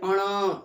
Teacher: तो मुंह से भी आया, थोड़ा सा नाक से भी आया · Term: मूर्धा और नसिका